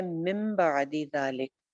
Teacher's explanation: نون ساکن کے بعد با آ جائے تو ہم نے پڑھا ہے کہ نون کی آواز کو میم میں بدل دیا جاتا ہے، اسی لیے یہاں پہ آپ کو ایک چھوٹی سی میم بھی نظر آ رہی ہے.